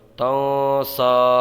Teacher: ضا ترضا، تا نون زبر تن، سین کھڑا زبر سا تنسا، یہاں پر اس نون کے اندر اخفا ہوگا، گنہ کر کے پڑھیں گے